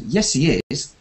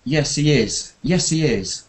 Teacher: Yeah, but I said yes, he is in the wrong way, because I said yes, he is, like I was disagreeing. So when you agree, keep it quite flat. · So when the intonation raises, it means something's wrong or you're disagreeing. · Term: raised intonation